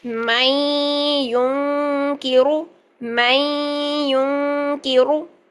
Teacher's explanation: کی آواز کو چھپایا، اخفا بھی کرنا ہے 2 سیکنڈ کا، پہلے نون کی آواز کو مرج کر دیا یا کے اندر، پھر نون کی آواز کو چھپایا کاف کے پاس جا کے